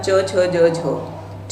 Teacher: तो च, छ, झ का उच्चारण स्थान यहाँ पर आपका तालु रहता है